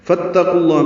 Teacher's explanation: فا کو تا سے ملا دیا گیا، یہ بیچ میں الف حمزہ عارضی ہے، یہ الف نہیں پڑھیں گے